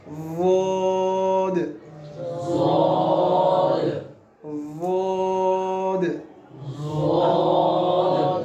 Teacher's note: ضاد کا زبان کی کروٹ اور اوپر والی 5 داڑھوں کی جڑ